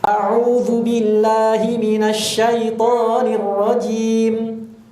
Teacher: Jimnya jangan terlalu panjang. Jimnya 2 harokat. Kan kita mau pakai Tariq Thayyibatun Nasyir ya, maka mad arid disukunnya pada jim itu 2 harokat.